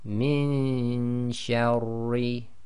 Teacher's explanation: So it's Noon Saakin followed by one of the other 15 letters, so it's Ikhfaa. So we're going to do the Ghunna with the hiding of the Noon, i.e. getting our tongue ready in the next articulation point.